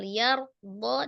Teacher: ada Ro sukun sebelumnya Fathah di huruf ya maka rnya dibaca tebal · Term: ro-nya dibaca tebal